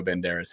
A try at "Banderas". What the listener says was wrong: It's pronounced. Banderas. You have to roll the tongue. Banderas.